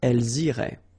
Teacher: make the liaison as well. You get this S and then the vowel after.